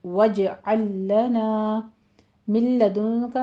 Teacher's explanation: کے آواز کو، اور آگے ہا میں الف مدہ، وجعل میں جیم کے اوپر قلقلہ کریں گے، اور لام کو لام کے ساتھ ادغام کر دیں گے